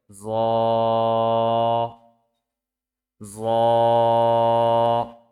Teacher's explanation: জিহ্বার আগা সামনের উপরের দুই দাঁতের আগার সঙ্গে লাগিয়ে উচ্চারিত হয় জ।